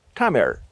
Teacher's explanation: The name of the language in Tamil is Tamir, with that retroflex approximant.